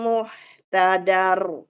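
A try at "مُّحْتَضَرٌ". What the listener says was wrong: Jangan dar. Muhtador.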